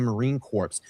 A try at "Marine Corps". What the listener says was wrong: the P is silent. Please don't do that again.